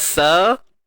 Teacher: Sin baris atas sa. Tak perlu keluarkan hujung lidah sebab ni huruf sin